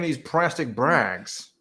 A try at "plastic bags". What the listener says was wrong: There's no R or L in bags.